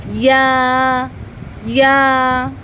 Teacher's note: এই ইয়াটা জিহ্বার ঠিক মধ্যখান উপরে তালুর সঙ্গে লাগিয়ে ইয়াটা উচ্চারণ হবে